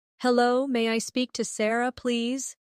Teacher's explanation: Notice how may I sounds like may-a in fast speech.